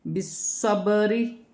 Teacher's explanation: را باریک پڑھی جائے گی، سواد کو موٹا پڑھا جائے گا، سیٹی کے ساتھ اور موٹا پڑھا جائے گا